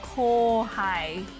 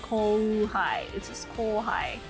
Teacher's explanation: It's just usually if it's a very similar sounding word, you just extend the vowel instead of putting an u there. When it comes to katakana anyways, because I know there's words like kohai, even though kohai is spelled like, you know, ko-u-ha-i, but when you say it, it's just kohai without, like, you don't really say the u.